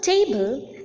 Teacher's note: The first syllable is more prominent than the second syllable. Hence, the first syllable is known as the stressed or the accented syllable, and the second syllable is known as the unaccented or the unstressed syllable.